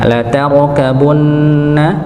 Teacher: ada huruf ra yang sukun yang sebelumnya dengan huruf yang fathah, maka dibaca tebal ra-nya ya. La tarkabunna ya, maka ra-nya ditebalkan.